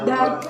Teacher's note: Yang keempat itu D, seperti pada kata dari, posisi lidahnya itu menyentuh langit-langit depan gigi atas, suara itu bersuara.